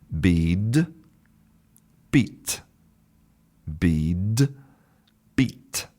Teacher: you can hear clearly that the first one is much longer than the second one